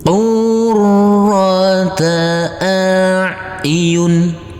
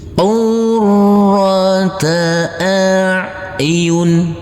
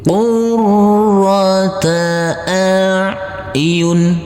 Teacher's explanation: huruf ro kita tekan, kita tahan, kita baca dengan tebal untuk setiap huruf-huruf yang bertasydid ini. Huruf ro-nya kita baca dengan tebal.